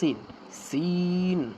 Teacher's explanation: সিন নরম করে শ্বাস চালু থাকবে